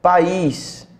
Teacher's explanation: As vogais ficam em sílabas diferentes. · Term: hiato